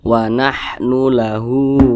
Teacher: di atas huruf H ada tanda baca berbentuk dah terbalik Nah maka huruf H ini dibaca panjang ini namanya Mad sililah qasirah